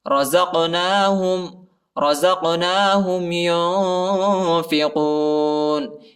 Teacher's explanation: قاف کو جھٹکا دیں گے، ٹھیک ہے، یہ حروف قلقلہ میں سے آتا ہے